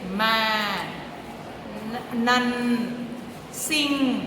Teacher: if the nasal passage is open by lowering the soft pallet the air passes through the nose and the sound is called the nasal sounds